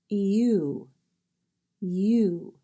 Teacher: the sound U is made up of two sounds E and ooh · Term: long vowel sound